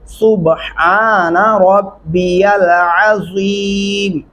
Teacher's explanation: عین گلے سے ادا کریں